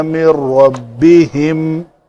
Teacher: نون کے بعد را ہے تو نون کا ادغام کامل ہوگا